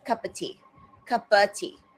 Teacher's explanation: So again, the of there gets weakened